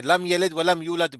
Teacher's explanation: लेकिन यहाँ उसके बाद क्या है, न बा है न मीम मीम भी है, न बा है न जी मीम है। इसलिए यहाँ पे इजहार है, मीम का इजहार करेंगे, यानी गुन्ना नहीं